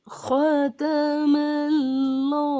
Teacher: اس میں بھی اللہ کے لام سے پہلے زبر ہے اس لیے لام کو موٹا پڑھیں گے